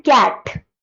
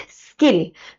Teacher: कैट में aspirated है। हवा थोड़ी सी रुक रही है। स्किल में हवा बिल्कुल नहीं रुक रही है। That is what it is aspirated अनएस्पिरेटेड।